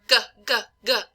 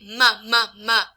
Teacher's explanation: So if you really want to understand the difference, if you go or g, g, g, you'll feel the back of the tongue touch the velum